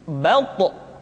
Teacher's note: dalam posisi sukun, to memiliki sifat qalqalah, sehingga suaranya mesti terdengar mantul